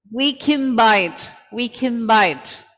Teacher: So for them that sound will sound like more like we can go now or we can buy it. They are saying the N here will sound like M.